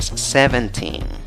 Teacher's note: tan grande en la primera sílaba y una fuerza prominente más grande en la tercera sílaba